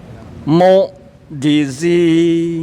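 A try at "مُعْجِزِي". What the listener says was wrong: Ayo, agak ditekan ya Pak. Coba Pak dilebarin. Mu'jizi itu. Dilebarin mulutnya. Mu'jizi.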